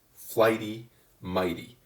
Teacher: you'll hear that the flight and the might syllables are the stressed syllables so that they hold the rhyme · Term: feminine rhymes